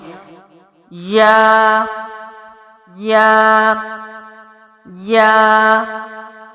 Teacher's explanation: درمیان زبان کو درمیان تالو سے لگا کر باریک آواز کے ساتھ